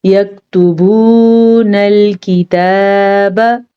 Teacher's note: ठीक है, ता को लंबा नहीं करेंगे क्योंकि ता के ऊपर सिर्फ और सिर्फ पेश है, जबकि बा पेश वाव भू, ये वाव मद्दा है तो इसे हम खींच के पढ़ेंगे